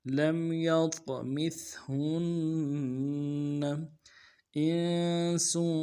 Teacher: حمزہ کو نون ساکن کے ساتھ ملانا ہے، نون ساکن میں غنہ کریں گے، سین کی سیٹی باریک ہوگی، سین کے اوپر تنوین ہے، غنہ کریں گے۔